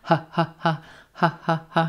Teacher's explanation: Very quick first syllable. It's reducing to a schwa.